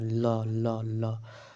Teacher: ल का उच्चारण स्थान दांत